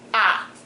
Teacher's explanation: So it's a mid-level tone and it's short. It's very short. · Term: fourth tone